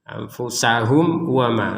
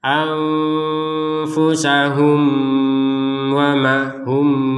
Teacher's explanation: mim sukun bertemu wau ini harus dibaca dengan jelas